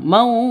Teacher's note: Jadi dipantulkannya ke huruf jimnya, huruf qalqalahnya. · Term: qalqalah kubra